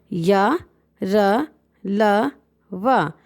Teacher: अब हम नेक्स्ट बताते हैं अंतस्थ व्यंजन। इन व्यंजनों को बोलते समय जीभ मुंह के किसी भी भाग को पूरी तरह स्पर्श नहीं करती है।